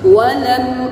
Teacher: waw dengan memonyongkan kedua bibir kita. Walam, lam mim sukunnya tidak didengungkan.